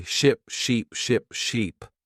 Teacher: Try to notice the long sound in sheep and the short sound in ship.